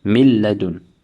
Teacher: we will merge the noon sakina into the lam without ghunnah, without any nasal sound. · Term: idgham